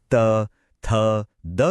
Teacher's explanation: जब जीभ की नोक दांतों से टकराती है तो हमें मिलती हैं त, थ, द जैसी नरम दंत्य ध्वनियां।